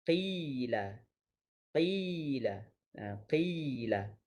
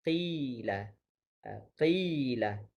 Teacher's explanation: Jadi sebenarnya kita punya bibir buka tetapi tidak pada tahap fathah. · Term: ya maddiyah